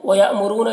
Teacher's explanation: حمزہ ساکنہ ہے، جھٹکا لگے گا، رو میں را کو پر پڑھنا ہے اور یہاں پر واو مدہ ہے۔